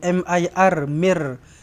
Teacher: Idgham bila gunnah. Tak payah didengungkan.